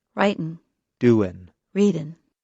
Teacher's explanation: In careful speech, Americans pronounce the G at the end of the verb. However, in fast speech, many Americans do not pronounce the G at the end of the verb.